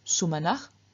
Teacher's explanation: In the vocative, we find just the stem, no ending, and again, through external sandhi, the final s changes into a visarga, so we get sumanach.